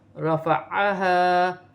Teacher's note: ہا سینے والی ہا ہے اور الف مدہ بھی بن رہا ہے، اسے ایک الف کی مقدار کھینچ کر پڑھا جائے گا